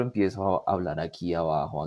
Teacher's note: El registro empieza a volverse como más frito, como en esta sensación más de pesadez, de ronquera, ¿sí? La sensación de dolor, como que me duele el cuello o siento como pesada toda esta zona.